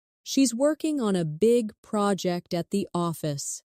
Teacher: Stress working big project and office